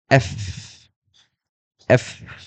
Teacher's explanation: উপরের দাঁত নিচের ঠোঁটে লাগবে